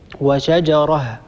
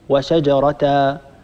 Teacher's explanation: لا نعوض عن هذا التنوين بألف، وإنما نقف على هاء التأنيث بهاء ساكنة، نقول وشجره، ولا نقول وشجرة، أيضا نقول وامرأة ولا نقول وامرأة، هذا خطأ.